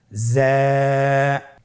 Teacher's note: জিহ্বার আগা সামনের নিচের 2 দাঁতের পেট ও আগার সঙ্গে লাগিয়ে উচ্চারিত হয়।